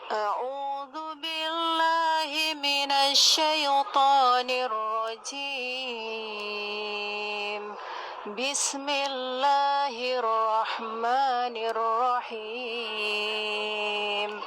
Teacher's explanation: Ya iramanya memang Bayati Kurdi, ini naik datar turun.